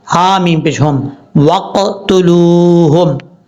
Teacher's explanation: واو ساکن سے پہلے حرف پر یعنی لام کے اوپر پیش ہے تو واو کیا ہوا؟ مدہ ہوا۔ ایک الف کی مقدار اس کو لمبا کریں گے